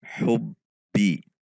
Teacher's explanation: Hu masuk ke ba tasydid. Hubbi, ada seperti tertahan sejenak karena sifat syiddah dari huruf ba.